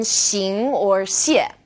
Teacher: this sound is somewhere in the middle of sh and S and this one's a bit tricky because the initial sh is